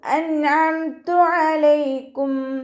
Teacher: നൂൻ സാക്കിനയ്ക്ക് ശേഷം ഇവഹാറിൻ്റെ അക്ഷരമായിട്ടുള്ള ഐന് വന്നു. നൂൻ സാക്കിനയെ വ്യക്തമാക്കി മണിക്കാതെ ഉച്ചരിക്കുക.